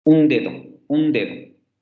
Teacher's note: lo tengo que articular en los dientes y también la en la n tiene que ser una dental y luego además hay que analizar la primera vocal un dedo